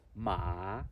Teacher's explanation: so means you have falling tone and then you have rising tone